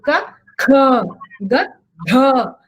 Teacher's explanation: So that is ka with alpaprana, kha is mahaprana. There also every alternate letters are alpaprana and mahaprana. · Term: alpaprana mahaprana